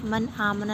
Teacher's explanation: نون ساکن کے بعد حمزہ آ رہا ہے، اظہار کا قاعدہ ہے، بغیر غنہ کے پڑھیں گے